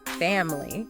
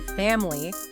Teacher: a native speaker is more likely to say family, almost completely dropping that middle vowel. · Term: ghost syllables